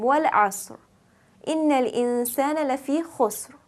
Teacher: both asr and khusr had a heavy ra because the sukoon preceding the ra sakin was preceded then by a fatha or a dhamma